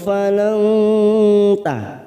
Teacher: nun sukun bertemu ta ikhfa hakiki, kita samarkan 3 ketuk